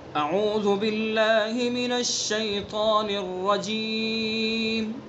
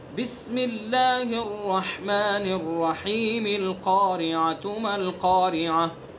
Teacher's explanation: الرجیم پر وقف کرنا اور الرحیم کو سورت سے ملا کر پڑھنا، اس کو قف وصل بھی کہتے ہیں. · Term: فصل اول وصل ثانی